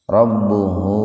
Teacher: Karena huruf ha didahului huruf hidup, ba-nya hidup. Jadi karena ba-nya hidup, hu-nya dibaca panjang 2 ketukan. Hukum tajwidnya mad silah qasira.